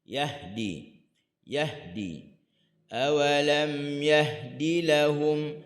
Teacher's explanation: Huruf ha dia ada hams. Dia ada rakhawah dia sukun.